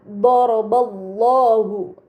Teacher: terdapat lafaz Allah sebelumnya harokat fathah pada huruf ba, maka lam yang berada di lafaz Allah dibaca secara tebal